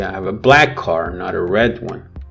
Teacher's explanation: you can stress black why because you want to create contrast on the color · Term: contrastive emphasis